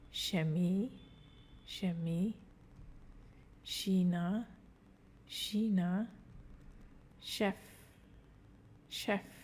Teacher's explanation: So when CH is in the beginning of a word, it sounds like SH again.